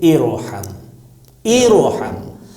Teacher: اگر حمزہ وصل کے بعد رے ساکن آ جائے تو ایسی صورت میں اگر زیر بھی ہے تب بھی رے کو موٹا ہی ادا کرنا ہے